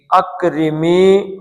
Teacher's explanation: اب کاف کو پتلا بھی پڑھنا ہے اور اس کا قلقلہ بھی نہیں کرنا ہے